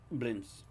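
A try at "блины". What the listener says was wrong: No, that's blini, which has got a silent S on the end, so it's spelt blinis, but it's pronounced blini.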